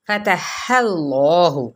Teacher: ہا کی حرکت کو ہم نے لام کے ساتھ ملایا تو اللہ پر پڑا جائے گا